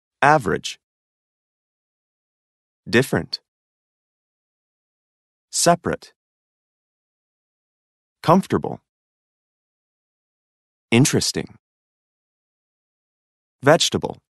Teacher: the vowel immediately after a stressed syllable is sometimes not pronounced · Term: unpronounced vowels, Unpronounced vowels